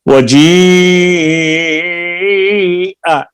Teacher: वजीआ, ये मद्दे मुत्तसिल है, इसकी दरमियानी मद है, मद्दे वाजिब भी इसको कहते हैं।